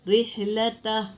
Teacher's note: را کے نیچے دیکھو زیر ہے تو اس کو باریک پڑھیں گے